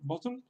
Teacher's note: Sería algo así, también volviendo a hacer una comparación con el inglés, si decimos la palabra bottle, pues igual, detrás de la T pues viene prácticamente este sonido, una L. Una L que no lleva alrededor ninguna vocal, sino que simplemente detrás de la T, bottle, pues sería pronunciar una L.